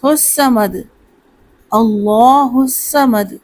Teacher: 1 مرتبہ صاد کو پڑھتے ہیں، جبکہ تشدید کی وجہ سے صاد کو 2 دفعہ پڑھنا ہے۔